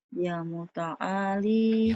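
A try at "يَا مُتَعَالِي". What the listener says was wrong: Ya panjang. Ya muta'ali.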